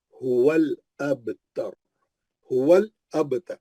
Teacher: اس کے بعد نی کا شانی کا ہول ابتر, لام پہ جو جزم تھا وہ پیچھے آ کے واؤ کے, لام پہ جو جزم تھا وہ پیچھے آ کے واؤ کے زبر کو پکڑا. ہول وہ بیچ میں کا الف گر گیا, نہیں پڑھے جا رہا وہ الف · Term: الف وصلی